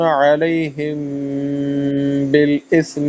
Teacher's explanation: اس میں غنہ ہے کیونکہ میم کے بعد با آ جائے